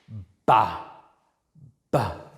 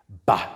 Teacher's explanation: It has got voicing, so it is in voiced bilabial stop.